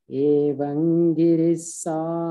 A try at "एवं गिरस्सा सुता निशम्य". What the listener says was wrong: सुता नॉट गिरि